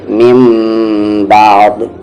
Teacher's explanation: ہے، یعنی کہ غنہ کریں گے آپ، سمپل سی بات ہے، نون ساکن کی آواز کو آپ میم میں بدل دیں گے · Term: اقلاب